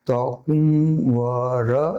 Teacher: મ છે એ કોમળ અનુનાસિક રૂપે રહી ગયો અને વ થઈ ગયો